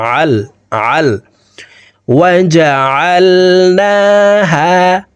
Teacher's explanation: আইনকে হালুকের মধ্যখান থেকে চাপ দিয়ে উচ্চারণ করবো